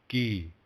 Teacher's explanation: it's like a sound between the k as in kite and um g like in um good